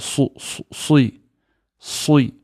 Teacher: It's heavy. The back of the tongue raises